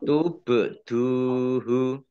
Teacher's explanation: ba sukun bacaan qolqalah dibaca memantul